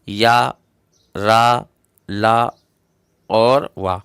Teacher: जिन व्यंजनों के उच्चारण में जिह्वा का पूरा स्पर्श मुख के किसी विशेष भाग के साथ नहीं होता है तथा इनके उच्चारण में श्वास का अवरोध बहुत कम होता है, उन्हें अंतस्थ व्यंजन कहते हैं।